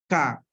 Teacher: oclusiva también porque hay una explosión, ¿sí? Hay una explosión, hay un sonido que sale rápido, ¿sí? K, aventamos el aire, lo sacamos.